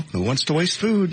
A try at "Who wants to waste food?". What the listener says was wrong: But if you end on a different intonation next time. Who wants to waste food?